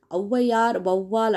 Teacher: முதல்ல வரும்போது ரெண்டு மாத்திரையிலிருந்து குறைஞ்சு ஒன்றை மாத்திரையா ஒலிக்குது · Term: அவகார குறுக்கம், அவுகார குறுக்கம்